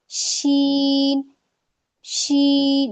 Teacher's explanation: इसमें जब हम शीन को बोलते हैं जैसे इसमें एक स्प्रेडिंग यानी फैल जाती है। इसमें आवाज पूरे मुंह में फैल जाती है। शीन शीन अगर हम पीछे से इसमें जो हवा का प्रेजर आता है अगर वह नहीं निकलेगा तो यह अदा नहीं हो पा अदा नहीं हो सकता। · थोड़ा सा गैप रहेगा जिसमें यह पीछे से जो हमारी हवा आती है, पास होती है तो वह बाहर निकल जाती है। तब यह शी अदा होता है।